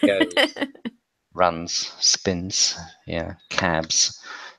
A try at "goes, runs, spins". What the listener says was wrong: I'm still hearing the S sound. Happens, goes, runs, spins.